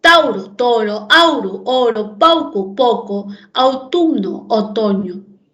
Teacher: El diptongo AU cambió a O